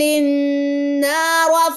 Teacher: را کے اوپر زبر، را موٹی پڑی جائے گی